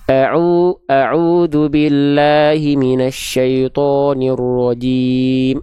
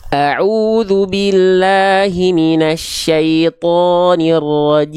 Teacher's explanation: Vokal A-nya kurang dibuka, vokal O-nya monyong. Seharusnya semuanya sama.